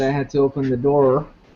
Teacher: te pusiste a pronunciar ese sonido como una consonante retroflexiva, pero no como un aproximante, que es esencial, porque obviamente se trata de una consonante, no solamente de una consonante retroflexiva, sino también de un aproximante, que es obviamente una distinción.